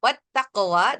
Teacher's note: Kemudian alif lamnya itu dibaca masuk atau melebur. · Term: syamsiyah